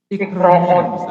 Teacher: Itu bukan bunyi i, bukan harokat kasrah, tetapi sebenarnya itu ada hamzah. Nah, kalau hamzah berarti strukturnya adalah konsonan vokal konsonan.